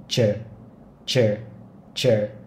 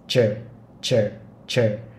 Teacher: Rồi còn âm phía dưới, mình sẽ làm y hệt gì như âm phía trên nhưng mà cổ họng rung lên, và đơn giản hơn thì có thể là mình đọc như là âm chờ trong tiếng Việt nhưng mà hơi chu môi ra trước, nó sẽ là chờ chờ chờ.